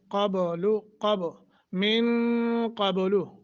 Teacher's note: با پہ قلقلہ کریں گے